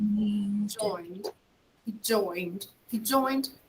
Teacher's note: we only pronounce the final d and it's very subtle right he joined he joined he joined the soccer club and